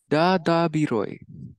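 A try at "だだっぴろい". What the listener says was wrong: Hi, but it looks like it's actually piroi. I don't know why I wrote B there. So darapiroi.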